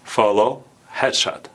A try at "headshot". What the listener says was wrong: It's not shut. A little longer. Headshot. Because shut is a different meaning, like I shut the door.